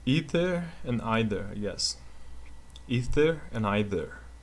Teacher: So Britishers are used to hearing them as though they were the same phoneme. Now, Americans, of course, have the minimal pair ether and either, where the voicing alone marks the semantic difference